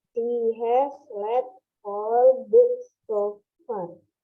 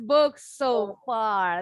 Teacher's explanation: Disambung walaupun S-nya 2, bunyinya 1, nggak ada jeda.